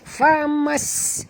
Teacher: huruf sin ini berbunyi dengan sofir yang jelas